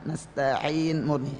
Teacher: ainnya tanpa kena hidung ya. Dengan nasta'in, ain tanpa hidung ya.